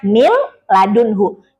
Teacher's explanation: tertulisnya min ladunhu tapi dibacanya mil ladunhu. Jangan mil ladunhu itu kalau mil ditahan nanti jadinya gunah ya. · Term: idgham bila gunah